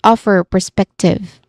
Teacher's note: with clear stress on off and spec